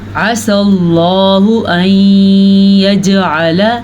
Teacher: اللہ کا نام پر پڑھیں گے کیونکہ اللہ کے نام سے پہلے زبر ہے